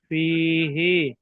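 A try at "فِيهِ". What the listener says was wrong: টান দিতে অসুবিধা হচ্ছে কি আপনাদের? টান কেন দিচ্ছেন না? যেখানে টান আছে টান দেন না।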